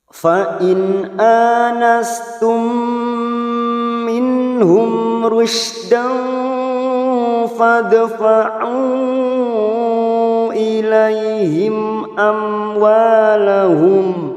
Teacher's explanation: ada mim sukun bertemu mim, namanya bacaan idgham mimi, siap masuk pada huruf mim berikutnya dan ditahan selama 3 harokat